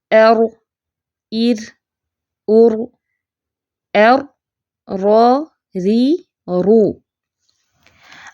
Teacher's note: र में थोड़ी थोड़ी रिपीटेशन है यह इसकी पहचान है ऐसे लगता है जैसे वन मोर देन वन रा यानी कि · را میں تھوڑی تھوڑی ریپیٹیشن ہے، یہ اس کی پہچان ہے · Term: ٹرلنگ